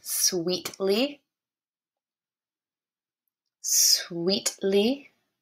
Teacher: We can hear both the S and the W at the beginning of sweetly.